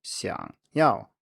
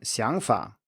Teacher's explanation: in siangyao to want xiang is a low tone xiang yao but in sianfa idea or way of thinking xiang is a rising tone